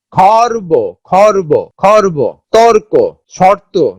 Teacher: র কিন্তু একবারে পুরোপুরি উচ্চারণ হচ্ছে না, এটা একটা খর্বিত বা আংশিক উচ্চারণ হচ্ছে, যে হলন্ত যুক্ত হয়েছে। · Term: খণ্ডিত উচ্চারণ, রেফের উচ্চারণ